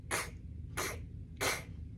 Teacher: You kind of make the sound in the back of your throat.